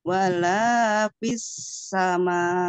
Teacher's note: Kemudian pengucapan V-nya, hati-hati, bibir dengan bibir salah. Tapi bibir bawah dengan gigi